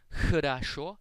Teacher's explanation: In Russian, this letter is pronounced like the letter H. It is a little more aspirated than the letter H, and you pronounce it by constricting the airflow.